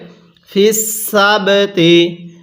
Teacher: বা টাও কিন্তু কলকলার হরফ বা এর মধ্যেও আমরা ধাক্কা দিয়ে পড়বো